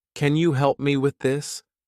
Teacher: For example, say, "Can you help me with this?" with the right rising tone at the end to show it is a question